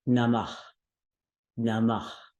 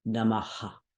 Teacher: Visarga means look at the vowel in front of me and aspirate it, which means to let some breathy sound come out afterwards. The only thing that's a little confusing with Visarga is sometimes it will make a whole extra syllable and sometimes it won't.